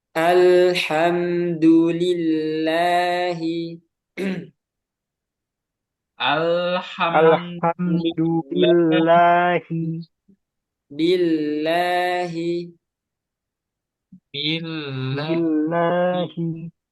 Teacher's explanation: yang kedua keadaannya tipis atau tarkik. Kapan? Yaitu ketika sebelumnya kasroh. Belum lam itu kasroh.